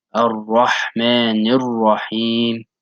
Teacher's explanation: the Ha on both of them, Ar-Rahmani and Ar-Rahim, you also compress your throat and push out the air from above your Adam's apple.